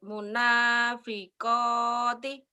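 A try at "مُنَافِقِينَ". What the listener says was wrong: tapi enggak boleh berhenti harusnya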